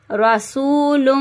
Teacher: اب واو مدہ کو ہلکا سا کھینچیں گے اور لم اس طرح سے گنہ کر دیں گے، ٹھیک ہے۔